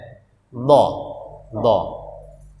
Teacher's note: Huruf isti'la juga, dia juga agak kita angkat pangkal lidah kita, dha. Jadi menggunakan sisi lidah ya, sisi lidah, bukan ujung lidah, tapi sisi lidah atau pinggir lidah ya. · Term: huruf dha